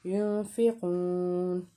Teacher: آگے دیکھیں ینفقون میں جو نون ساکن ہے اس کے آگے ہے فا، اس کا مطلب ہے یہ حروف اخفا کا حرف ہے، تو ہم نے غنہ کرنا ہے، ناک میں آواز چھپانی ہے